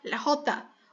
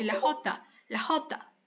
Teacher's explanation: RR mas mais suave do que o g então é rota Observe que o r é meio rápido então por isso ele dá essa questão da suavidade